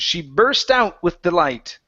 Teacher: we have the word burst instead of bust give me an R sound